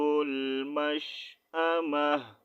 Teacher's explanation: جب تا کو ساکن کریں گے ٹھیک ہے تو ہا کا ساؤنڈ نکالیں گے